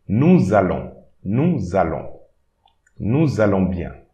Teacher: So the first part will be this S and the E here. It will create an extra, an imaginary Z. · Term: liaisons